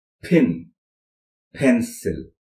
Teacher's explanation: First is p, as in pin, pencil, etc., which is an aspirated one. Aspiration came because it is in a stressed initial position.